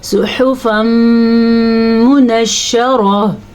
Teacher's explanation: صحفا منشرہ، یہاں پہ پھر ہمارے پاس ادغام بالغنہ ہے. تنوین کے بعد میم آیا ہوا ہے تو اس کو ہم غنے کے ساتھ پڑھیں گے.